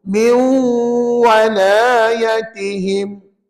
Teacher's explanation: Idgham ma'al ghunnah sebab ada nun mati jumpa waw.